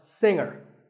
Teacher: the G is silent